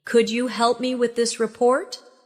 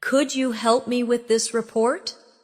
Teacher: Pay attention to the stress. The words help and report carry more weight in the sentence.